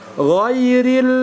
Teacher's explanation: huruf gho adalah huruf rakhawah ya Sehingga di situ ada aliran suara yang tersisa · huruf gho ini adalah ya huruf dia istila maka dia itu adalah huruf yang tebal kemudian huruf gho adalah huruf rakhawah ya Sehingga di situ ada